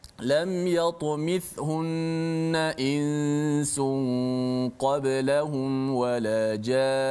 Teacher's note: Nun sabdu walaupun ketika wakaf tetap dibaca panjang dengung itu.